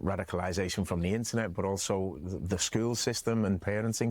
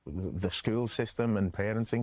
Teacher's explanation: he doesn't really say parenting with the R, right? It's almost like a like a like parenting parenting.